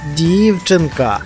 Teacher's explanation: Правильно, наголошений перший склад.